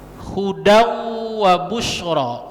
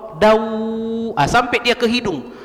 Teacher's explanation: jangan kita baca hudan wa busyra, karena ini idgham bi gunnah, tanwin an bertemu huruf wa